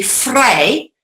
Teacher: your V sound is phonetically said like an F. So, for example, the word free in Dutch would be vrij, but with a V, all right, instead of an F.